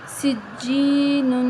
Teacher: یا مدہ ہے اس کو بھی ایک الف کے برابر لمبا کریں گے